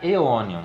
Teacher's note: A gente tem o ditongo AE, que no latim científico tem som de E. Então vai ficar Aeonium.